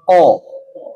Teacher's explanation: ya O juga gitu Q ao coba ngomong o Ah ini Awas jangan ko tapi o buletin lagi